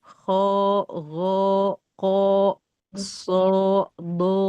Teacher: Yang o itu penyebab dia tebal itu karena pangkal lidahnya naik, isti'la. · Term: huruf tebal, huruf isti'la